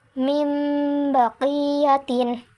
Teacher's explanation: terjadi apabila setiap nun sukun atau tanwin bertemu dengan huruf ba cara membacanya adalah dengan menyuarakan huruf nun sukun atau tanwin menjadi suara mim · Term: iqlab